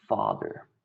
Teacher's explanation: Fricative, the air is coming out partially blocked. Labiodental, my lower lip and my teeth are touching, and it's voiceless, so my neck is not vibrating. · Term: fricative, labiodental, and voiceless